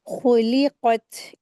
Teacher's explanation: कैफ़ा, काफ के साथ या मदिया, काफ के साथ या लीन का रूल हो रहा है, तो इसको सॉफ्टली करके पढ़ेंगे। खुलिक़त, ख़ा को अच्छे से हलक से अदा करेंगे और हैवी करके पढ़ेंगे। ख़ा को हैवी करेंगे, लाम को बारीक करेंगे, फिर क़ाफ को हैवी करेंगे।